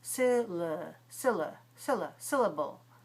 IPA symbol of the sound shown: ə